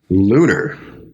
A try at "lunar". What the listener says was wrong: Almost. Open the A. Lunar. Yeah, because you're doing lunar. It's almost an E. So E's in Spanish are E.